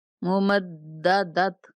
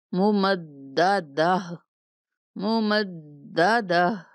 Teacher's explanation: گولتا کو وقف کی صورت میں ہا سے بدل دیں گے، ممددت، ایسے نہیں پڑھنا، ممددہ، ممددہ، ہا پڑھیں گے۔